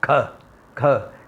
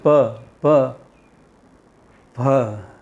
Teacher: Like when I say kha, kha, ga, and pa, pa, pa. What is the origin? One is guttural, other is labial.